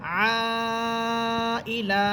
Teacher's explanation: যদি থামি তাহলে লাম হরফে একালিপ টেনে পড়তে হবে